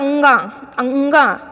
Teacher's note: और उसका उच्चारण स्थान और क्या है नासिका है ठीक है तो अंगा जब भी बोलिए तो कंठ के साथ-साथ नासिका का भी यूज करिए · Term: नासिक के व्यंजन